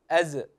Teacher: جعل لكم من أنفسكم أزواجا، بعضهم ينطق مثلا حرف الزاي أز، يجعل فيها شيئا من القلقلة الاهتزاز، هذا غير صحيح